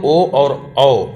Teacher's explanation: इनका जो उच्चारण स्थान है वो कंठोष्ठ है ना, यानी दो चीज, कंठ प्लस ओष्ठ